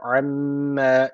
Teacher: şeddeli mim var mutlaka bir elif tutuyoruz